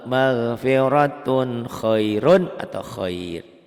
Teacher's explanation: Khair dihentikan. Ini jadi O, A-nya jadi O kalau dibaca ya.